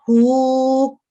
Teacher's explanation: हा के ऊपर उल्टी पेश है तो इसको ये दम्मा इशबाइया है, तो इसको 2 सेकंड लंबा करेंगे हु। तो जब इसको इकट्ठा पढ़ेंगे खितामुहु।